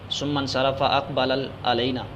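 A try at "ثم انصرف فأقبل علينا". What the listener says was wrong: ثم انصرف، پھر آپ پھرے، آپ لفظ چھوڑ رہے ہیں، ثم انصرف،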